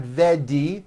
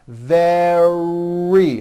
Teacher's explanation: Make sure that the R sound is strong and your lips are coming forward. Your tongue is back and you push out the R.